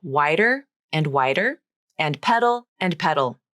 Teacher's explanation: both the T and the D become the flap in these words the flap T and the flap D sound exactly the same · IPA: /ɾ/